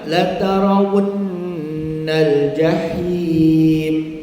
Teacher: ra baris atas ra baris atas semua tafkhim